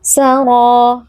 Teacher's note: huruf ro tebal, angkat pangkal lidah, kemudian terdapat mat tabi'i pada huruf ro ini sehingga dia harus dibaca panjang 2 harokat